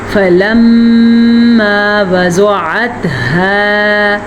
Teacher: میم پہ شد آ گئی ہے تو میم پہ غنہ ہوگا